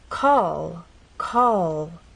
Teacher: lead into another consonant sound we dropped our tongue down but in this final position we're going to keep the tip of our tongue pressed against the bump · as you finish the word the tongue does not drop down it stays pressed against that bump